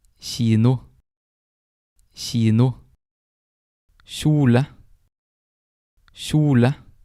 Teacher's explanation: Jente, jente, K, K, konge, konge. The K can also have a sh sound, and that is usually when it's in front of an I or a J.